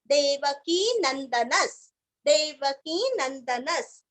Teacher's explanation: नंदनस, न के ऊपर आघात विसर्ग का आधा स